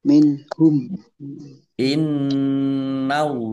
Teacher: nun tasdid dibaca ghunah atau mendengung ditahan. Biar tampak mendengungnya. Allahnya dibaca tebal karena harakat di depannya fathah.